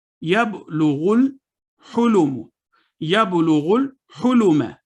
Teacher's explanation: واو الف اور الف نہیں پڑھے گئے، غین لام کے ساتھ ملا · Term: وصل